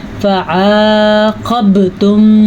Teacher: فعاقبتم، ٹھیک ہے، یہاں پہ عین جو ہے حروف ہلکی میں سے ہے تو آپ نے اس مخرج کا خیال رکھنا ہے، اور موٹا قاف ہے اور با پہ ساکن ہے تو کلکلا ہو رہا ہے